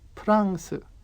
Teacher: If you remember from the example with copy, Korean doesn't have an F sound, and so France comes out 프랑스.